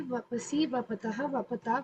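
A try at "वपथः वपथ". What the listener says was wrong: In the Madhyama Purusha, please all of you note down, it should be thaha, tha. Mahaprana tha. Otherwise, it becomes the Prathama Purusha Rupani.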